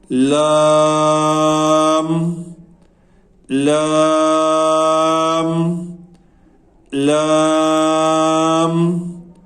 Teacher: لام جو ہے یہ زبان کی جو کروٹ ہے سامنے سے، وہ جب اوپر والے دانتوں کے مسوڑوں سے لگے تو پھر لام ادا ہوتا ہے۔ اس کے پڑھنے میں کوئی دقت نہیں ہوتی کیونکہ اس کی ایک ہی آواز ہے اور یہ آسانی سے ادا بھی ہو جاتا ہے۔